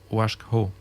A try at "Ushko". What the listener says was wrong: Oui, Ushko. Ushko. Pichum. Le A ne se prononce pas encore là. Comme s'il y avait un H aspiré presque muet là.